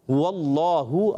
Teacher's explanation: ہا آیا جیسے قل ہو, ہا جو پہلے والا تھا, واللہ اللہ کا ہا جو ہے وہ حلق کے نیچے والے حصے سے